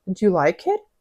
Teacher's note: вони роблять інтонацію догори